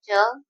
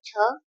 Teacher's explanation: च वर्ग में अल्प प्राण है च, महाप्राण है छ